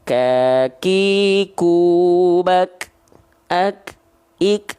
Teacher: Jadi kan hams itu sebenarnya artinya adalah mengalir nafas. Ya, tapi untuk huruf kaf itu dilafalkan hanya berupa percikan nafas saja